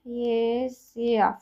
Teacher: Yəni burada həm kəmiyyət dəyişikliyi var, həm keyfiyyət. O A kimi tələffüz ediləcək və Y samiti əlavə ediləcək.